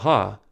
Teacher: the glottal opening is narrow enough to create some turbulence in the Airstream flowing past the vocal Folds for this reason ha is classified as a glottal fricative the